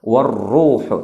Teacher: Warruhu juga dibaca ra mufakhamah, artinya tebal, ya, karena dalam keadaan dhammah. Warruhu, tidak warruh, warruhu.